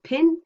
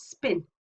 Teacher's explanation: the vocal folds don't start vibrating for the vowel a little while after the lips have come apart · So pin is aspirated and unaspirated is spin. When we say a voiceless sound immediately followed by a voice sound, like a vowel, sometimes it does take a little while before the voicing is switched on.